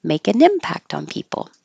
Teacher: the T changes to a d on impact because it's between um well it's getting ready for the vowel